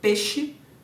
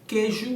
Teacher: a perda da distinção entre vogal e ditongo antes de consoante palatal